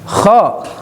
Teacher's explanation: Lanjut ke kha. Adnal halki, ngorok. Ya, harus ngorok. Kalau tidak ngorok tetap merubah makna.